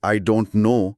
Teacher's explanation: جب لفظ ڈونٹ کے بعد کوئی ایسا لفظ آئے جو کانسننٹ یعنی حرف صحیح سے شروع ہو، جیسے یہاں ہاف کا ایچ ہے، تو امریکی انگریزی میں اکثر ٹی کی آواز کو بولا ہی نہیں جاتا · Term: the disappearing T